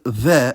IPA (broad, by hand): β